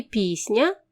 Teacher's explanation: у слові пісня перший склад наголошений а другий ненаголошений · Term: наголос